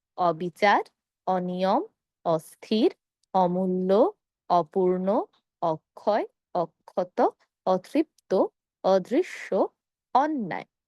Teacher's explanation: নেতিবাচক শব্দের শুরুতে অধনি থাকার কারণে আমরা উচ্চারণ করব অ এর মত।